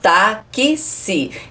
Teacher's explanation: Na palavra táxi, o X tem 2 sons, porque eu falo táxi. Então o X é representado pelo fonema KS.